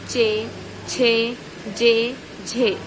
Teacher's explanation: स्पर्श संघर्षी व्यंजन कहलाती है, यानी कि जिसमें जीभ है वो उच्चारण स्थान को रगड़ती हुई जाती है, स्पर्श संघर्षी व्यंजन कहलाती है